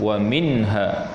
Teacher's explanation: nun mati bertemu dengan hak izhar halqi Ilham Adli yakni dilahirkan Sebutkan nun mati tanpa dengung